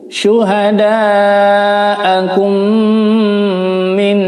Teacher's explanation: idgham mutamatsil lain bacanya juga ditahan 4 ketukan ya, didengung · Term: idgham mimi